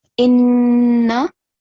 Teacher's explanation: So you have to perform gunna and make sure you do it for 2 seconds.